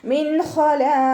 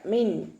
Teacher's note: നൂനിന്റെ sound വ്യക്തമായിട്ട് അവിടെ കേൾക്കണം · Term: നൂൻ സാക്കിന